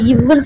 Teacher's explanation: இவ்வுன்னு சொல்லும் போது மேல்வாய் பல்லை கீழ் உதடு பொருந்தது.